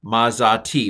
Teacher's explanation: The aleph quiesces at the end of a long syllable, as if it doesn't exist. It kind of becomes an open syllable.